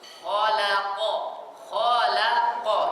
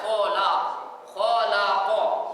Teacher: Lam berada di atas huruf yang tafkhim ini. Maka jangan sampai kita membaca lam itu jadi tafkhim, jadi tebal. Jangan dia sampai terpengaruh kepada huruf kha dan jangan sampai terpengaruh kepada huruf qaf. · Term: tarqiq tipis